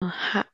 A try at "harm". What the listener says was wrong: Okay, really starts the R sound here. Harm. Harm.